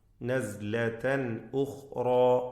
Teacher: നസ്ലതൻ എന്ന പദത്തിലെ തൻവീൻ ഇൽഹാർ ഹൽഖി നൽകി മണിക്കാതെ വെളിവാക്കണം